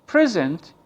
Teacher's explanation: so the stress on the second syllable of the word, so you are talking about a verb